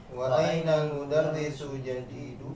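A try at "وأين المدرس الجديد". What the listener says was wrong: Wa ainal mudarrisul jadidu, alif lam qamariyahnya dibaca ya.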